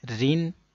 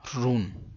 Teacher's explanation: را کے نیچے جب دو زیر ہوتی ہیں تو باریک پڑھتے ہیں